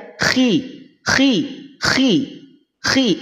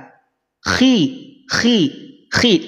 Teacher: dalam keadaan kasrh pangkal lidah tetap terangkat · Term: tafkhim nisbi